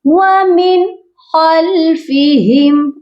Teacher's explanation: اس نون ساکن پر صرف اظہار ہوگا، اظہار حلقی ہوگا کیونکہ آگے حروف حلقی آ گیا ہے